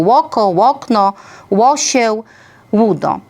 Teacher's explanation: Drugą cechą była labializacja samogłoski o albo nagłosowego, czyli nagłosowego u, czyli takiego u, które zaczyna wyraz.